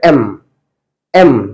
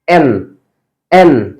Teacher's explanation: normally জিহ্বাটা কিন্তু একদম normally থাকছে এম, বাট এন বলার সময় এন, জিহ্বাটা উপরে চলে যাচ্ছে